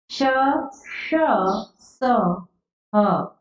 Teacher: इन वर्णों का उच्चारण करते समय वायु मुख से तीव्र गति से रगड़ खाकर निकलने के कारण ऊष्मा पैदा करती है, इसीलिए इन व्यंजनों को ऊष्म व्यंजन कहते हैं।